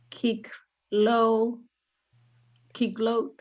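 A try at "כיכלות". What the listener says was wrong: Keech, it's keech. You got to kind of blend them. Keech, loat.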